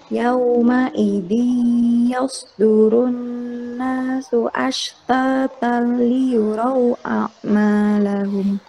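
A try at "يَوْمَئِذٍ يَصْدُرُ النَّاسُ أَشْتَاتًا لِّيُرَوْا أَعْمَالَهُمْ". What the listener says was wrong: Ya, ini di idgham bila gunahnya ditekan sedikit lagi ya. Ashtatal liyurau a'malahum.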